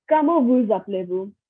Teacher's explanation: I'm pronouncing the S here in vous because the word after vous is appelé, which starts with the A, which is a vowel. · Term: like a Z sound